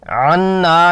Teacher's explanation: نون مشدد پر غنہ 2 حرکات، خشوم سے، ہونٹ کھلے، زبان تالو سے چپکی ہوئی